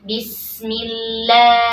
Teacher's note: di sini lamnya tipis ya, karena sebelumnya mi-nya berharakat kasrah. Bismillahi, ya, lam 2 harakat.